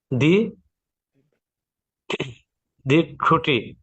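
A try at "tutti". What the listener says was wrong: তুতি, দি টুটি না, তুতি, এখানে তর উচ্চারণ করবে, শব্দ টি না, তুতি।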